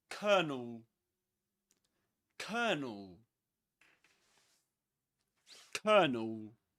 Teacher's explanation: in British English, before a consonant sound, you don't pronounce the letter R.